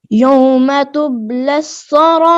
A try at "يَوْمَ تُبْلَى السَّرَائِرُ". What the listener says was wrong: تب کے با پہ قلقلہ صحیح کریں. یوم تبلی السرائر.